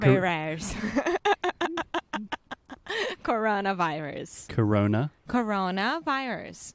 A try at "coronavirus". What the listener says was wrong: Okay. Well, we do need to do some work with your R's.